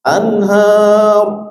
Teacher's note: Nah, itu tafkhim rabnya. Didahului fathah atau domah ra sukun maka terbaca tafkhim atau tebal ra sukun.